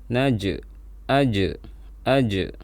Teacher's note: Kemudian di sini ada jim sukun, dan ini dibaca qalqalah. Suaranya dipantulkan saat kita membaca jim.